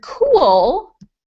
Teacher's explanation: the word cool is totally different because your tongue doesn't even touch the top of your mouth